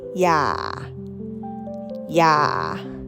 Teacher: it means don't with a low tone.